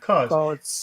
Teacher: a lot of times uh we don't say the B part. We just say cause. That's very that's very conversational to to even not even say the B.